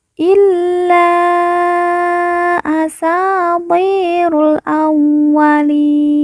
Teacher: ti kita baca panjang 2 harokat karena di depannya terdapat huruf ya sukun atau ya mati yang merupakan tanda baca panjang 2 harokat.